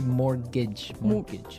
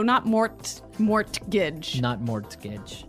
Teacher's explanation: it has a T in it, but you don't pronounce it